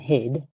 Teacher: word like hit and hid, in the second word, the final consonant is voiced, and that makes the vowel sound a little bit longer